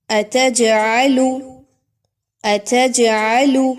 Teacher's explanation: جیم کو ہلایا جا رہا ہے، جیم کو، اس کی آواز کو روکا نہیں جا رہا۔